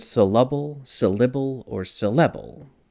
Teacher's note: it's a natural relaxed sound that's easy to produce and it can sound kind of like an uh I or E depending on the circumstance